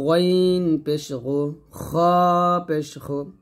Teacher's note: গইন পেশ গু, খ পেশ খু, গলার শেষ থেকে মোটা করে নিয়ে আসতে হবে।